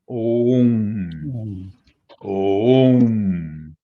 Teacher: Não existe mantra Aum, porque o A e o U se fundem para produzir o fonema O. E é um fonema longo, porque ele tem duas letras, né?